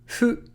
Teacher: fu is between the English F and the English H. It's between fu and hu.